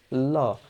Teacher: পার্শ্বিক ব্যঞ্জন হচ্ছে, দেখো, যখন আমরা ল উচ্চারণ করি তখন দেখবে যে এই যে জীবের ডগা উপরের শক্ত তালুতে ল, যখন এভাবে স্পর্শ করবে এবং খুব দ্রুতই এখান থেকে ছেড়ে নিচের দিকে চলে আসবে। হ্যাঁ, এবং জিভটা যখন নামবে তখন বাতাস তার দুই দিক থেকে বের হয়ে যাবে। এখন যেহেতু পাশ কাটিয়ে যাচ্ছে সেই কারণে এটাকে আমরা নাম দিয়েছি পার্শ্বিক ধ্বনি, ঠিক আছে।